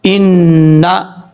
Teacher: حمزہ نون زیر ان، نون زبر نا، ان نا، نون کے اوپر شد ہے، غنہ کیا جائے گا 1 الف کی مقدار